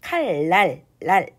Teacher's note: 여러분 니은이 랄이라고 발음이 돼요. 그래서 리을이 그대로 있고 뒤에 있는 니은이 리을로 바뀌는 현상이 되는 거죠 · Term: 순행동화